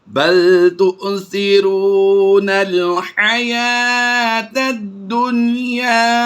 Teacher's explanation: نون ساکن کے بعد حروف یرملون میں سے یا آیا ہے، لیکن یہاں پر ادغام نہیں ہوگا بلکہ اظہار مطلق ہوگا · یا کھڑی زبری یا کو ہم پڑھیں گے، واو خالی ہے تو اسے ہم نہیں پڑھیں گے. یہ الف لام دونوں خالی ہیں، ان کو بھی ہم سائلنٹ کریں گے اور تا کو دال سے ملا دیں گے.